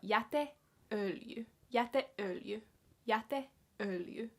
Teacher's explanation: And it's compound, so you kind of have a pause in between e and ö as well, so you're not like saying it as directly as these other words.